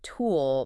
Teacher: If I say tool, my lips are already rounded for that oo sound before I even hit the T. And the T itself is physically different.